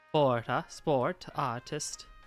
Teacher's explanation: Some of the voiceless T becomes thicker by moving to the position of R